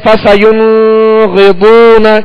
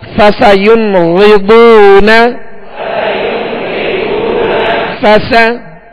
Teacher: اس پر اظہار ہوگا, اس لیے کہ نون ساکن کے بعد حروف حلقی میں سے غائن آ گیا